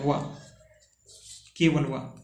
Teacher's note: ऊपर के दांत प्लस निचला ओठ